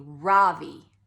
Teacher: in America people call me Ravi with the stress on the first syllable